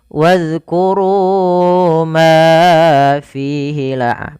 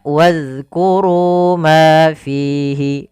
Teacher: Kemudian ma fihi, fihi panjangkan. Antara ru, ma dan fi harus sama mad tabi'inya, jangan dibedakan.